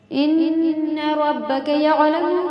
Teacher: ربک میں را کو پر کر کے پڑھیں گے · انک میں بھی نون پہ تشدید ہے، غنہ کا قاعدہ ہے